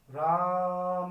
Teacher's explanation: दूर खड़े व्यक्ति को आवाज लगाते पुकारते हैं चिल्लाते हैं लंबा खींच के बोलते हैं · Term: प्लुत स्वर